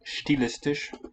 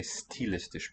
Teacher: the most elegant style of German doesn't palatalize this S here at the beginning. Some speakers do it, stilistisch, but it sounds a bit more refined if you say stilistisch because of the Latin origin.